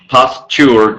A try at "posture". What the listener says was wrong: just you must make the T sound